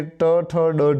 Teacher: ટ, ઠ, ડ, ઢ જે છે એમાં તમારી જે જીભ છે એ તાળવાથી થોડા આગળના ભાગે અડે છે, એટલે કે ટ, ઠ, ડ, ઢ તરીકે ઓળખાય છે, મૂર્ધન્ય તરીકે ઓળખાય છે.